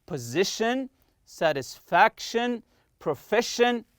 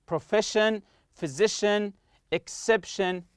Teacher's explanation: Always stress the next to last syllable. Not the last syllable, no, the one before it.